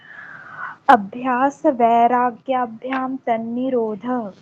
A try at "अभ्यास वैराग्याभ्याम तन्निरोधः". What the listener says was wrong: बहुत बढ़िया जी, बहुत बढ़िया।